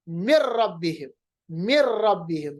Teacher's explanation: اسی طرح مر ربہم، مر ربہم، جیسا کہ نون ہے ہی نہیں، نون کو بالکل ہم نے را کے ساتھ ایسا ملایا کہ نون کی آواز بالکل ختم ہو گئی۔ ایسے ادغام کو ہم کہتے ہیں ادغام بلا غنہ، غنے کے بغیر، ادغام غنے کے بغیر۔